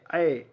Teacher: अय का उच्चारण कंठ और तालु से होता है